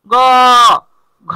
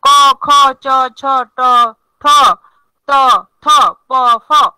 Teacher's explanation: ক খ চ ছ ট ঠ ত থ প ফ, এগুলো হলো অঘোষ ধ্বনি। আর ঘোষ ধ্বনি গ ঘ, দেখেন এগুলো উচ্চারণে কি হয়? স্বরতন্ত্রে কাঁপে।